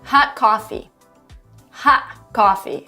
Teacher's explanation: glottal stop another thing that native speakers often do is that they avoid pronouncing the sound T in certain sentences and words and they tend to replace the sound with a glottal stop